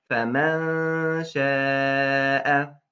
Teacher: You look at the letter. It's sheen. Is it among the heavy letters that we just wrote down? It's not, so it must be light.